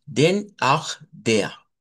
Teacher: esa a no hay que abrirla mucho como la del español, hay que dejarla un poquito medio abierta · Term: alemán no rótico